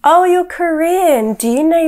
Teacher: in order to be sarcastic you should use a flat intonation and make a comment which is the opposite of the truth